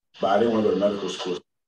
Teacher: the black speaker has the higher and fronter dress vowel